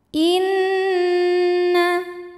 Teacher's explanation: Bismillahirrahmanirrahim Inna di sini ada hukum ghunah musyaddadah karena nunnya bertasdid cara membacanya didengungkan jadi bunyi n tahan sampai ada suara masuk hidung kurang lebih dua harakat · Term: gunnah musyaddadah